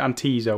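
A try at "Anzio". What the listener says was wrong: Anzo, I think. I don't think you pronounced the I. Yeah, Anzo.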